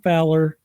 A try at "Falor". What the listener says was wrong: With a long a there.